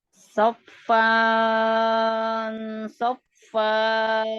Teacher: Jadi bunyinya di antara bunyi N dan bunyi NG ya. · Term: ikhfa